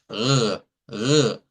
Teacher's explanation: Es un sonido que debe de provenir de la úvula o también de la gútura. Se puede hacer en esas dos zonas y es un sonido como cuando hacemos gárgaras. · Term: R uvular